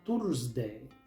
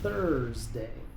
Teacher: Muchos pronuncian esta palabra Tursday, pero aquí la th se pronuncia con la lengua entre los dientes. La U es muda antes de la r.